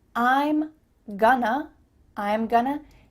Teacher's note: those reductions we talked about at the beginning of this lesson we have a contraction i am and then we're reducing going to to become gonna